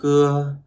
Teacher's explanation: Khưa bật hơi rất mạnh đúng không ạ? Bật hơi rất mạnh từ cổ họng.